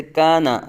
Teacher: الف سے پہلے کاف باریک ہے تو الف کو بھی باریک پڑھا گیا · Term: ترقیق